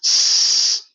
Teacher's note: I can say S for quite a while. That's a turbulent noise.